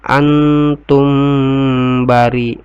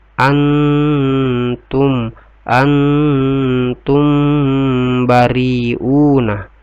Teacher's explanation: mim sukun ketemu dengan ba, itu ikhfa syafawi, dibaca dengun ya.